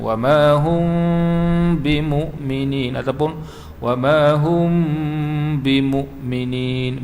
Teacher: Jadi kita dengung tu bibir kita tu hampir-hampir rapat lah. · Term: ikhfa syafawi